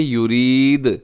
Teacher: دال ساکن ہوگا، ساکن ہوگا تو دال قلقلہ ہو جائے گا